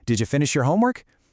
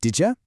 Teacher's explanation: When you follows a word ending in a D sound, it completely morphs into a J sound. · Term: J sound shift